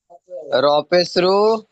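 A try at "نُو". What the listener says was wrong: একটু একটু দেখে পড়েন, এই র না, এটা প্রথমে কি অক্ষর আছে? নুন, ওটা নুন, ওয়াও পেশ নু, নুন নয় নু, নুন ওয়াও পেশ নুন নয় নু, নু, ওয়াও মাদ্দা, একালিপ টান, ওয়াও মাদ্দা।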